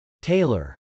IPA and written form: tˈeɪlɚ (tailor)